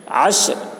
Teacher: عشر عین ہے، عین کو حلق سے ادا کریں گے. بڑی شین ہے، بڑی شین کے بعد سیٹی کی جیسی ہوتی ہے.